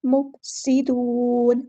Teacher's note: सीन को बारीक अदा करना है, इसमें सीटी आनी चाहिए